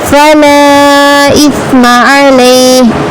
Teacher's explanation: لا کو 6 الف کے برابر کھینچ کر پڑھنا ہے